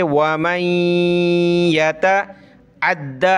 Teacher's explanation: नून साकिन के बाद या पर तशदीद है तो नाक में आवाज़ पैदा करेंगे